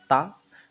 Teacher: लेकिन ता बोलोगे तो दंत को जीव स्पर्श करेगी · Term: दंत वर्ण